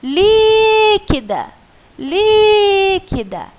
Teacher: Então, o li é a sua sílaba tônica.